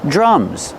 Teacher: Use a short uh sound like cup and up.